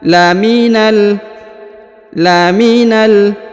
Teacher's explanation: huruf Na langsung masuk sambung ke huruf lam yang berharakat sukun